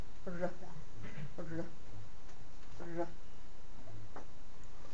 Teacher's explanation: الر الر الر حركة كده سريعة، دي اسمها راتروفلكس، راترو يعني ورا، فبيبتدي المار قدام ويعدي بسرعة يا دوبك لامس خفيف سقف الحلق. صوت الر دايما بيبقى لمسة خفيفة بحيث ان الهواء ممكن يعدي برضه ويعمل زي الموجات اللي احنا ايه بنسمعها، لكن مبيبقاش قافل زي اللام، اللمسة خفيفة قوي ممكن تعدي حاجة. · اللسان بترفع لفوق، وطرف اللسان يا دوبك بيعدي المار قدام. الر الر الر حركة كده سريعة، دي اسمها راتروفلكس، راترو يعني ورا، فبيبتدي المار قدام ويعدي بسرعة يا دوبك لامس خفيف سقف الحلق.